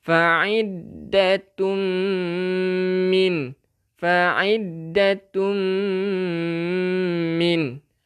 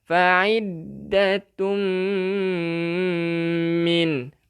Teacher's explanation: Tanwin bertemu dengan mim, kita memasukkan beserta dengung. Fa'iddatum min. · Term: idgham bi gunnah